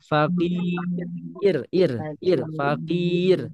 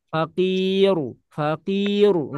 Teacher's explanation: Faqir jangan sampai kita baca tebal · Kemudian ro-nya dibaca tipis · Karena ro-nya sukun, sebelumnya kasroh. Maka rumusnya sukun sukun kasroh dia dibaca tipis. Fakir. Jangan sampai kita baca tebal.